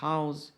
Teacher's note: a aspiração forte indica que a palavra deve ser pronunciada com som parecido com H do Inglês